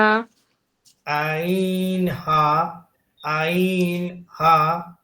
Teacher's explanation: অক্ষর দুটি আরো একবার উচ্চারণ করুন প্লিজ। হালকের মধ্যখান হইতে হচ্ছে আইন আর হা। আইন, এটা আরেকটু গলাটা চিপে আদায় হবে।